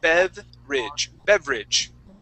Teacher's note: so we skip right from that V to the r